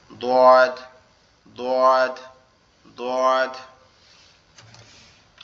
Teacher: দোয়াদ উচ্চারণের নিয়ম হচ্ছে কি জিহ্বার গোড়া উপরের তালুর সঙ্গে লাগায়া